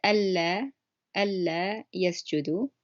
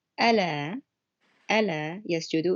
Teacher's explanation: So you could tell that it's a double L sound on the first word that I said. · On the right, in the Al-Layth Quran, it says Allah yasjudu. It's a lighter L sound, and it changes the meaning. It means the Allah sounds is no longer negative.